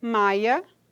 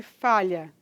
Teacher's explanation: pode ocorrer a vocalização da lateral palatal